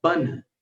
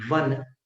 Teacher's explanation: ब का उच्चारण दोनों होठों से था, व का उच्चारण ऊपर के दांत और नीचे के होठ से था